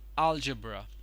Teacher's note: the wrong syllable it is actually not algebra it is algebra the stress is put on the first syllable